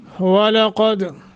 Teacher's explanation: वाव को मोटा करना है, काफ मोटा, दाल पे कलकला है।